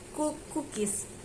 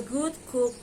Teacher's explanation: K is voiceless and g is voice. The both consonants are velar plosive. They are made by back of the tongue, adding soft plate or velar place and complete stop.